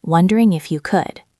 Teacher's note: It sounds like one long word, wondering if you could. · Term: linking